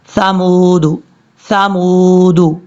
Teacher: یہ جو ثا ہے اس کو سیٹی کے ساتھ نہیں پڑھنا، یہ بغیر سیٹی کے ساتھ پڑھا جاتا ہے نارمل طریقے سے